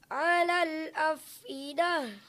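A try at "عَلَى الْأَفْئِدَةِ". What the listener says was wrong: 'Alal, selesaikan lamnya dulu, baru ke huruf hamzah. 'Alal af. Hati-hati, hamzah ada di pangkal tenggorokan. A. Dia bersifat syiddah. Ada nafas, suara yang tertahan. A. 'Alal af'idah.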